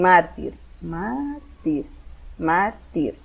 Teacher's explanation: Entonces la tónica es la mar, o sea, de derecha a izquierda, la segunda, la penúltima.